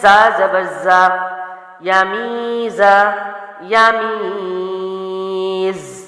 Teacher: سیٹی والے حرف میں سے سختی والا حرف ہے، اس کی آواز تھوڑی سخت ہوتی ہے